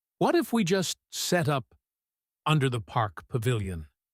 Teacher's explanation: She puts a tiny pause before under the park pavilion to let the idea sink in. She wants them to visualize the space.